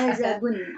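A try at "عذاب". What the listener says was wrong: salah udah azab adab. Ini beda, da sama za-nya berbeda ya.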